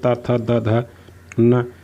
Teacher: त वर्ग, ये दंत, जब भी आप त वर्ग का कोई भी व्यंजन उच्चारित करोगे तो आपकी जीवा है वो आपके दांतों को स्पर्श करेगी।